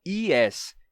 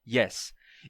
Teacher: O Y do inglês não tem som de I. A palavra yes não começa com som de I.